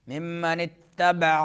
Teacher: ممن میم میں جو ہے مشدد ہے تو ادغام ہوگا، غنہ ہوگا